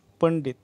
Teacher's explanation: पंडितचा उच्चार न या अनुनासिके होतो